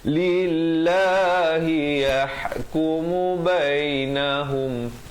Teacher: Lafaz jalalah di sini dibaca nipis 2 harakat.